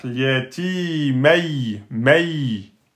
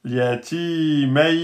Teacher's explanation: Là, on a un ya soukoun. Le ya soukoun, il est précédé de fatha. Donc, ce n'est pas une voyelle longue.